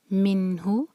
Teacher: نون ساکن کے بعد ہا جو ہے حروف علقی ہے تو ہم نون کو کلیئر پڑھیں گے